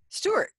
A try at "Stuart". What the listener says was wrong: There's a U in there. Stuart. Yeah, you've got to pronounce the U's, but not the R's.